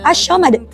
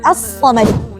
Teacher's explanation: As-samad di sini huruf sad, selain dia alif lam syamsiyah yang harus dimasukkan, huruf sad juga tidak punya sifat tafashi. Berhamburnya udara di dalam mulut. Dia hanya punya safir, bukan asyamad, tapi as-samad.